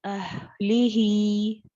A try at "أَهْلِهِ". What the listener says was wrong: ها میں جمع ہے أهله رخاوہ ہوگا ہا ساکنہ میں پورا ٹائم دے رخاوہ کا دوبارہ